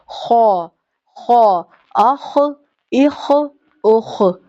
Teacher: اخ، اخ، اخ یہ بھی آپ کے حلق کے اوپر والے حصے سے ادا ہوتا ہے، جو وہ حصہ جو اگر آپ میرر میں دیکھیں تو آپ کو نظر آئے گا.